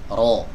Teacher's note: huruf ro dibaca tebal dikarenakan dia berharokat fathah